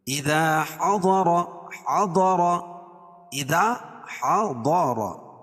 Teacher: ضاد کو پر پڑھیں گے، را پر پڑھی جائے گی